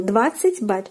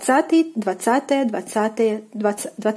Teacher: In cardinal, it is falling on the first syllable. And in the ordinal, it falls on the second syllable. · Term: stress position